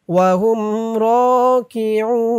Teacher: এখানে অক্ফ করার কারণে পেশের পরে ওয়াও সাকিন এক আলিফ টানটা 3 আলিফ টান হয়ে গেছে